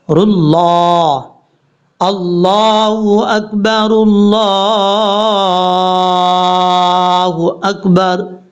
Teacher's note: را کو لام کے ساتھ، یہ جس لام کے اوپر شد ہے، اس لام کے ساتھ ملانا پڑے گا